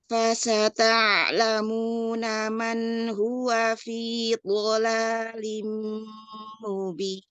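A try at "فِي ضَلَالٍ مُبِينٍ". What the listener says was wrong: Iya, dotnya angkat itbaknya. Fi dhalalim mubin. Iya, ya tadi catatannya pada tempo gunnah ya, tempo gunnah diperhatikan di situ. Kemudian bainiyah pada ain dan juga sinnya mau lebih ditipiskan ya. Tadi hampir terdengar seperti fasya gitu ya. Hati-hati di situ ya Nah, Masya Allah silakan dijabarkan makhrajnya, ahkam tajwid.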